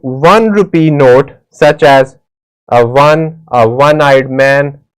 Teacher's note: one begins with the consonant sound of w o is a wall but the sound it's giving is of w that's why we will use the indefinite article a with it.